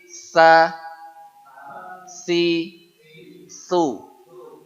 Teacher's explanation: yang mudah agar desisnya muncul jadi untuk yang sa ini adalah ujung lidah nempel pada ujung Gigi saya di atas ini disertai desis sehingga dia harus mendekati huruf Sin ya ini satu sekali lagi